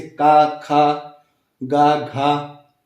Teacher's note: देखिए कंठ मतलब गले से आवाज निकल रही है आपकी, गले से